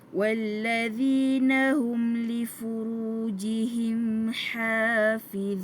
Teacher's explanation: Mim mati dengan lam tak perlu dengungkan sebab apa? Izhar syafawi.